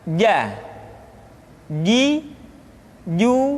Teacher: huruf ja dikeluarkan dengan menyentuhkan tengah-tengah lidah dengan langit-langit